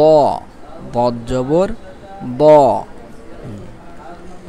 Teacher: জিহ্বার কিনারা উপরের মাড়ির দাঁতের সাথে লাগিয়ে দ